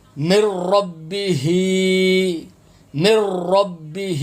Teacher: را کے اوپر تشدید ہے، اس لیے نون ساکن ہو جائے گا، نون آپ نے نہیں پڑھنا۔